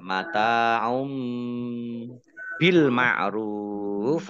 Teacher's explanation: Domah tanwin bertemu dengan huruf ba, bacaan iqlab, ya, dibaca membalik. Baknya dibaca mim dulu, ditandai ada mim kecil berdiri.